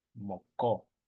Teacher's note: It's more closer to the farther back of your throat. It's a uvular. Kind of imagine putting your tongue back up to that your uvula, that dangly part in the back of your tongue that hangs down at the back of your mouth, rather.